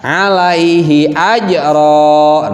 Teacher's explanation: suara tanwinnya itu hilang, yang ada hanya suara fathah.